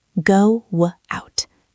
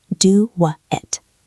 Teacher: To move from O to, our lips have to change shape. To make that change smooth, a little sound naturally appears. In this case, it is a W sound.